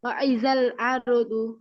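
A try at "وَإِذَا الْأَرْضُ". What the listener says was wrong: ওয়া ইদাল, ওয়া ইদাল আরদু। আপু আরদু হচ্ছে হামজার জায়গায় আইনের মতো শোনাচ্ছে, ওয়াও জবর ওয়া, হামজা জবর আ, ওয়া ইদাল আরদু। আপু ইদাল হচ্ছে ওয়া ওয়া, ওয়া ইদাল আরদু।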